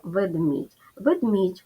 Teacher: в ньому є перший голосний звук е який вимовляється нечітко він наближається до и і в кінці є буква м'який знак яка звуку не позначає